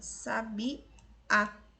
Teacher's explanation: Então, a primeira e a segunda são paroxítonas, já em 3 a palavra é oxítona. A última sílaba, que é a tônica, é a mais forte.